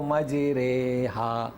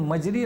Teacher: زبر کو زیر کی طرف مائل کرنا، اور الف کو یا کی طرف مائل کرنا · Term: امالہ